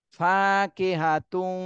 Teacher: এই বা গুন্নাকে গুন্না সহ মিলাতে হবে ফাকিহাতু ঠোঁটটা গোল করে এই তু বলার সময় ঠোঁট গোল করে গুন্না করতে হবে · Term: গুণনা